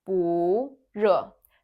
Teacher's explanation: So the first character has to change into the second tone, into 不 热. 不 热.